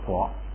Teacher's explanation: 卡本来是送气的，前面一加前加字改成不送气，改成嘎，就成了国